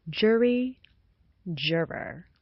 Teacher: The first vowel sound is the little uh heard in good, put, and should. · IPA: ʊ